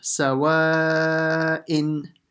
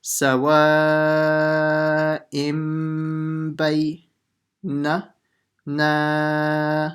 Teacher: So it'll be bay. So now when I read it, with the ba, I'll change the n sound into a m sound.